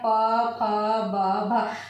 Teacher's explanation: ओठ क्या हो रहे हैं? आपस में जो है वो टकरा रहे हैं, इसलिए क्या हो जाएगा? ये ओष्ठ्य ध्वनिया हो जाएगी।